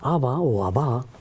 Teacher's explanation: más acentuado en la A en el arameo